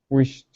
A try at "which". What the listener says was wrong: So what you're doing right now is you're pronouncing a T before it. You're saying wished. Okay, it's actually after it. So you're pronouncing an SH into a T. Okay, so keep working on that CH sound.